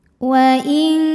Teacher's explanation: wa in ada hukum ikhfa ab'ad karena nun sukun menghadapi huruf kaf. Maka nun sukun bunyinya samar-samar siap-siap menuju makhraj huruf kaf disertai bunyi dengung.